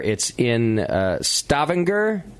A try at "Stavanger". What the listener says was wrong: It's the accent's on the second half.